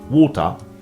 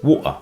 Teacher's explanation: the T in water, as well as the T in Gretel, is generally pronounced as a glottal stop in Cockney English